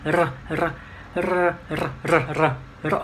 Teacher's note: Ví dụ có một chữ R thì mình R nhẹ thôi. Thế còn có hai chữ R cùng với nhau thì R ở cái đầu lưỡi mình khoảng 2-3 lần